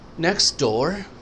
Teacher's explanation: T اکثر silent ہو جاتی ہے because of the next sound